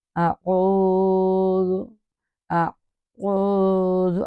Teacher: تو آگے کیا ہے، دیکھیں حمزہ اور آئین دونوں کو ایک مخرج سے نہیں نکالنا، جیسے کہ حمزہ ہمیں فرنٹ ماؤتھ سے نکالنا ہے، اور حرف عین عین تو ہمارے مڈل آف تھروٹ سے نکلے گا